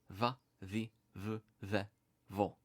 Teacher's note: indicate a voiced bilabial fricative v. And this is sometimes used to transcribe a v sound.